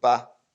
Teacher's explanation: it's not fourth tone, it's neutral tone